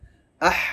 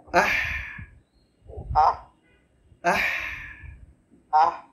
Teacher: খেয়াল করে হা গলার আ থেকে আওয়াজ টানতে হবে, আহ বাতাসটা আসবে, আহ আহ আহ, আহ এই বাতাসটা আসে ওই যে আমাদের ঝাল লাগলে অনেক সময় না, ওইখান থেকে বাতাসটা হয়।